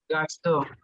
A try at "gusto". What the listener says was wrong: no, it's a U, not A. Gusto, because GU is gu. So there, if you see CU is ku, so then GU is gu. just you have to memorize these things.